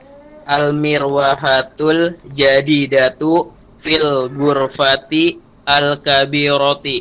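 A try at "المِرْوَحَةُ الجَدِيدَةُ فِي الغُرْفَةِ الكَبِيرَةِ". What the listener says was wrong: Nah, begitu ya. Begitu cara bacanya, udah betul ya.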